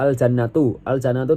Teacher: lamnya dibaca jelas karena bertemu huruf qamariyah yaitu jim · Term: lam qamariyah